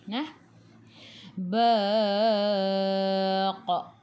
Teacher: Lantunannya besar. Qalqalah kubra nama dia.